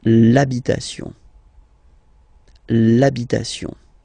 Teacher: L'argent, and same thing as previously when what we saw for the masculine part. Even if you've got this H, then the first sound you hear is A. Okay, so for the same reason you will have to take this A away, and then you get this l'habitation.